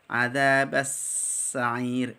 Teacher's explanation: kalau sin tipis itu ada as-safir ya, ada desisan. Adzabas, sampai keluar desisannya.